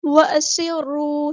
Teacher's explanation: را جو ہے ہمارے پاس ہیوی لیٹر ہے، پورا ادا کرنا ہے، موٹا ادا کرنا ہے، اور را مشدد ہے تو اس کو خوب اسٹرینتھ کے ساتھ، جماؤ کے ساتھ ادا کرنا ہے، ایک بار ساکن کر کے ایک بار اس کی حرکت کے مطابق۔ واو مد آ گیا تو مد اصلی کریں گے، ایک الف کے برابر ہم اس کو لمبا کریں گے۔ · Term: سین کی سیٹی